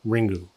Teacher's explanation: as Japanese words by and large end in either a vowel or an N, to accommodate this written word in a vocal vernacular, the U is added to the end